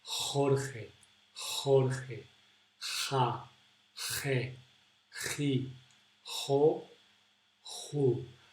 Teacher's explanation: So we almost close all our throat, so only a little bit of air can come out. You have to put your tongue down, look, and close, almost close all the way of the air, and just leave a little bit. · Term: J sound